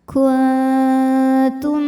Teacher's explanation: Kemudian ada hukum idgham mimi karena mim sukun bertemu mim. Maka dibacanya masuk ke mim kedua disertai dengung. · Maka nun sukun dibunyikan samar-samar, siap-siap menuju ta disertai bunyi dengung. Samar dan dengungnya lebih besar samarnya ya. Jadi suara yang dari mulut, aliran suara dari mulut masih banyak. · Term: ikhfa aqrab